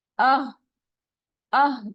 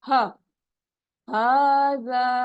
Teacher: حمزہ اور ہا اس میں آپ نے دیکھنا ہے بالکل ایک ہی جگہ سے ادا ہو رہے ہیں